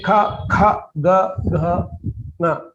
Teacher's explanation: So that which is pronounced in the throat, that kantya, that is gutturals.